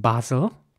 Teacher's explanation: in British English this is pronounced Basel with an R sound